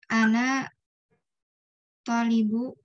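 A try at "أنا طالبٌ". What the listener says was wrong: Bun, tolibun baca. Tanwin pakai tanwin ya.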